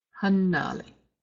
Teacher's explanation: The first syllable will have the stress in the word hanali.